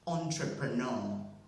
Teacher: the word is having four syllables and with two stresses which is um second stress on the first syllable and primary stress on the last syllable